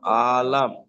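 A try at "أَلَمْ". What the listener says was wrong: আলাম, আলাম, আলাম, আলাম। আবার আলিফ টান দিচ্ছেন। আলাম, আলাম, আলাম,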